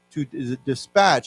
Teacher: if you say to dispatch, then as a 动词, the emphasis goes to the last syllable. So we say to dispatch, I want to dispatch him out to get something.